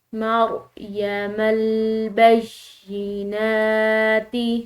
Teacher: مریم البینات، یا مشدد ہے، اس کو دباؤ اور پریشر سے پڑھیں گے، اور نون کے اوپر کھڑی زبر کی وجہ سے اس کو ہم نے ایک الف کے برابر کھنچاؤ دے کر پڑھنا ہے